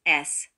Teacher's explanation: The S is pronounced as a piercing hissing sound, similar to the sound produced by breaks of compressed air, like this, S.